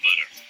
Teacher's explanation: a flap sound, can also be called a tap sound, is where the T is reduced in a sense so that it sounds kind of like the D